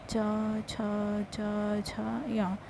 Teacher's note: तालु आपकी जीभ के ऊपर का हिस्सा, जिसमें जो खुरदरा भाग होता है उसको तालु कहा जाता है। अब जब भी हम चा वर्ग के जितने भी वर्ण हैं उन्हें उच्चारित करते हैं तो हमेशा तालु से ही टकराते हैं